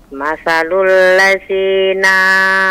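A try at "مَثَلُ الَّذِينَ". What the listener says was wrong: Nah, kepanjangan nanya. Masalul ladzina hummilu.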